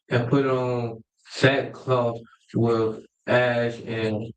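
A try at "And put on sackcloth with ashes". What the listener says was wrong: He put on, hold on, wait, slow down. So when you're reading, you see that comma, that means you got to take a little pause, right? He said he put on sackcloth with ashes.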